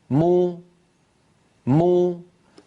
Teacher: وإن أراد أن ينطق ميما مضمومة يقول مو، انظروا مو مو، فبتباعد الشفتين خرجت الميم، وبانضمام الشفتين خرجت ضمتها